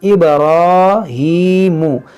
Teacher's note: ये बा में कलकला करेंगे, रा को मोटा पढ़ेंगे